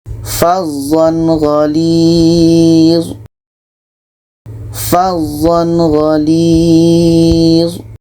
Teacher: ini izhar halki, tidak ada dengung, dan harus dibaca jelas. Tanwin jelas, gha jelas.